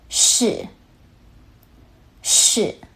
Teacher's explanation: The fourth tone starts high and drops sharply downward, like you're making a firm statement.